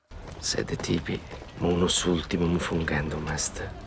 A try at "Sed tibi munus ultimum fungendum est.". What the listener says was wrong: The other, you know what I'm about to say, fungendum est, the final M being pronounced, does not do that.